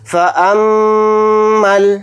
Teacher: میم کے اوپر تشدید ہے تو میم کے اندر غنہ بھی کریں گے